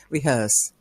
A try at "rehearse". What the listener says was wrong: you'll still hear you're just doing that little bit of stress on the re, like you're rehearsing something again,